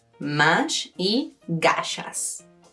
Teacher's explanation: This sh sound is added in Spanish to some words to sound like baby talk.